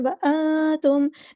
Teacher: نون ساکن کی آواز ہم یہاں چھپا دیں گے، اخفا ہوگا